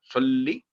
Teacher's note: सल्ली, सल्ली ना हो, सल्ली थोड़ी देर तशदीद पर ठहर के बोलते हैं उसे